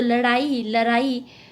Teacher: पूर्वी हिंदी में ड ध्वनि प्राय र के रूप में उच्चारित होती है, तो लड़ाई लड़ाई, जबकि पश्चिमी हिंदी में अपने सामान्य रूप में लड़ाई उड़ना आदि।